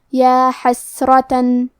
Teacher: حرف الراء پہ زبر ہے تو یہاں را کا حکم ہے تفخیم، ہمیں حرف الراء کو موٹی آواز میں پڑھنا ہے. آخری میں تا پہ تنوین زبر ہے، پھر حرف العین ہے کلمت علا، عین حروف الاظہار میں سے ہے. · کلمت یا حسرہ میں یا پہ کھڑا زبر ہے تو یہاں مد الف ہے، ہمیں مد الف کو ظاہر کرنا ہے کیونکہ یہاں سین ساکن ہے اور سین بھی حروف الہمز میں سے ہے تو ہم یہ حرف کو ایسے پڑھیں گے یا حسرتن.